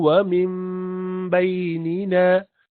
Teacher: And this is called iqlab, qalb. You do not pronounce noon sound, you pronounce meme sound. And some people leave a small gap there.